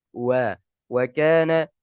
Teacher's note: tidak menggabungkan kedua bibir secara sempurna ketika mengucapkan huruf waw